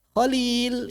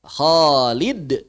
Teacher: Kalau manggil Khalil, lam yang panjang. Manggil Khalid, kha-nya yang panjang. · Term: vokal panjang